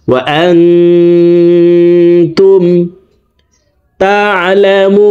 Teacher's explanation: এখানে ইকফা গুন্না, নুন সাকিনের পরে ইকফার 15টি হরফের ভিতরে একটি হরফ তা আসছে, এই কারণে নুন সাকিনকে নাকের ভিতরে লুকাইয়া গুন্নার সহিত পড়ব।